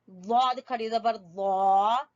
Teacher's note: زبان کی کروٹ جب اوپر والی داڑوں کی جڑوں سے لگے تو ضاد